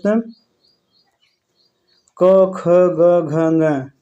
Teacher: क वर्ग के अंतर्गत दोस्त क, ख, ग, घ, ग इसका उच्चारण स्थान कंठ है